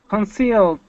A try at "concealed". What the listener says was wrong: Okay, give me that D. Concealed.